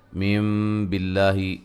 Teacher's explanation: یہاں نون ساکن کا اقلاب ہے، یعنی کہ اس نون کو ہم میم سے بدل کے پڑھیں گے، نون نہیں پڑھیں گے۔